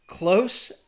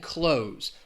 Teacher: One has that S sound, the other the Z sound.